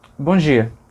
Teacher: dia já está perdendo o D, o sonzinho de D. Ele está ficando só o J. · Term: sem o D